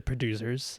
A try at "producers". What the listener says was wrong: You keep devoicing the S or the S sound. You keep saying producers.